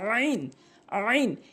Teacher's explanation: অর্থাৎ আইন হলকের মাঝখান থেকে আইন বলতে হবে। আইনের জায়গায় হামজা এনে উচ্চারণ করা যাবে না, আইন উচ্চারণ করতে হবে।